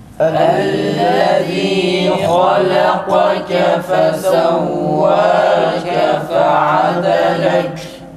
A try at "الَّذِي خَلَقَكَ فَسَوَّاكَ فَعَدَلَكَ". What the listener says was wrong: Kaflar olmuyor arkadaşlar. Nefes kesilmiyor, ses. Bundan dolayı da kalkar oluyor.